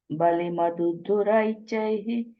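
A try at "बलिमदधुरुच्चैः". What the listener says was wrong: Balim ada duruchaihi. I think you're saying balim adu, you're saying balim ada duruchaihi.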